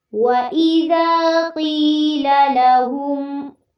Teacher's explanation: قیلا میں قاف کو پر کرنا ہے